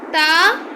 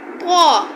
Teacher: تا کو باریک پڑھا جاتا ہے، طا کو پر یعنی موٹا پڑھا جاتا ہے